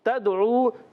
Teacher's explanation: تا کو دال سے ملانا، دال ساکن ہے، قلقلہ ہوگا